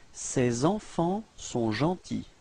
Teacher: you will have to make this small link, la liaison between c'est and enfant